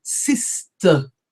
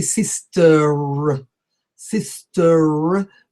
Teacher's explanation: the R is not rolled and neither do we say system so sister is not usually